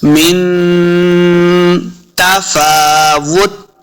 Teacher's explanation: मिन नून साकिन के बाद ता उर्फ इख्फा से है, तो यहाँ पे हमने इख्फा का कायदा करना है, यानी गुन्ना करके पढ़ेंगे। मिन तफा, तफा, फा के ऊपर खड़ी ज़बर है, देखिए इसको 2 हरकत हमने लम्बा करके पढ़ना है।